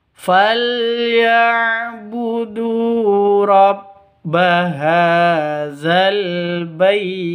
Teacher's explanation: Bait ini mad lin, panjang boleh 2, boleh 4, boleh 6 ketukan. Sama seperti mad arid lis sukun seperti itu.